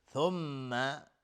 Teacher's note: را حکمش ترقیق است، نازک تلفظ میشه. ثم میم مشدد 2 حرکت غنه میدیم